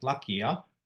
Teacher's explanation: the first vowel is back, so therefore the suffix will also be back.